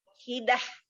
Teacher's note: Tak marbutoh di akhir ya, di akhir bacaan ya, itu hak sukun, hak yang dari bawah tenggorokan ya, hak besar.